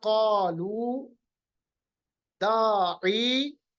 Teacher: ये तो मद असली की पहचान है, एक अलिफ या दो हरकत के बराबर।